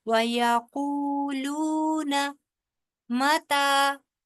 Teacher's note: وَيَقُولُونَ کا جو نا ہے وہ لمبا نہیں ہوگا ، وَيَقُولُونَ مَتَى متا ما بھی لمبا نہیں ہوگا کیونکہ اس